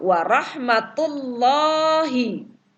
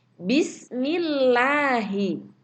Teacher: lam tarqiq, yaitu lam yang dibaca tipis, bisa disebut juga muraqqaqah. Yaitu huruf lam dibaca tarqiq ada dalam 2 keadaan, yaitu pertama, lam yang terdapat pada lafzul jalalah Allah dan didahului oleh huruf yang berharokat kasroh.